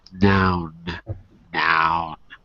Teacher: the air passes more through your nose than through through your mouth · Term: alveolar nasal